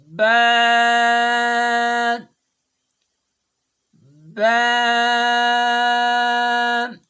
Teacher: با ادا کرتے ہوئے اوپر والے ہونٹ اور نیچے والے ہونٹ آپس میں ملیں گے تب با ادا ہوگا